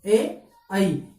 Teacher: ए आई, ये दोनों अपने क्या रहेंगे, कंठ तालु, यानी ए और आई इन दोनों का उच्चारण स्थान क्या होता है, कंठ तालु होता है